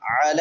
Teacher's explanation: العین وسط حلق سے